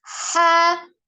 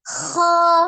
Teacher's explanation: Ya, dari huruf ha dari tenggorokan bagian tengah, huruf kho dari tenggorokan bagian atas ya. Maka ucapkan ha kemudian kho dengan bentuk mulut yang tidak berubah.